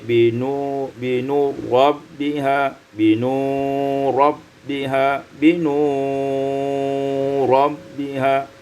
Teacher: binuri rabbiha, idghamul ra fir ra menjadi binu rabbiha